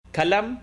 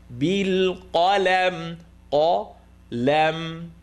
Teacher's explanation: Qaf heavy, lam light.